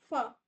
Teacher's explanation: Air force through narrow gap जैसे फ तो थोड़ा सा आपका जगह बचेगी। · फ्राइकेटिव क्या होगा, air force through narrow gap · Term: फ्राइकेटेड